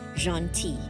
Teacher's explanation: you have the word gentil here. The L is silent